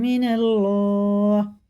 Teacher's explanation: زبر کے ساتھ اللہ کا لام ہے تو پر پڑھیں گے موٹا منہ بھر کے